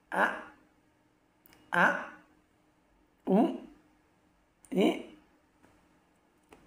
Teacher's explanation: গলার শুরু থেকে আলিফ উচ্চারিত হয়, অর্থাৎ আলিফ হয় না, আলিফর যে হামজাটা আছে ওটা উচ্চারণ হয়। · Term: আলিফের উচ্চারণ